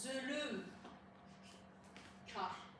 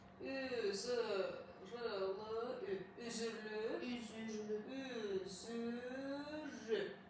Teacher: Həmin o iki dənə cingli samitin arasına mütləq sait artırılır. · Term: Səsin artırılmasından